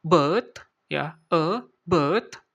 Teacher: Di sini suara e, itu umumnya digunakan pada British English, ya, atau bahasa Inggris British, ya, karena mereka kadang tidak membaca huruf r setelah vokal